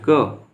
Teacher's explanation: जब उच्चारण करेंगे उसमें कंपन नहीं होगा कंपन कम होगा उसे अघोष कहते हैं